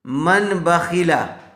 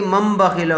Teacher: تنوین یا نون ساکن کے بعد با آئے تو نون کو میم سے بدل کر غنہ اور اخفا کے ساتھ پڑھیں گے۔ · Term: اقلاب